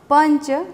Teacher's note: પંચ એમાં જ એ અનુનાસિક છે, જેનો ઉચ્ચાર ન થાય છે